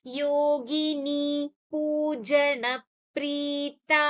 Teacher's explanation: ಸೋ ಪೂ ಇಸ್ ದೀರ್ಘ here ಪ್ರೀ was also ದೀರ್ಘ ಅಂಡ್ ನಿ ಇಸ್ ಆಲ್ಸೋ ದೀರ್ಘ